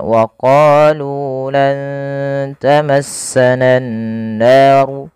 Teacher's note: panjangkan huruf qaf dan nu harus sama bunyinya antara qa dan nu karena ia bacaan mad tabi'i. Qa dipanjangkan dengan alif, lu dipanjangkan dengan waw.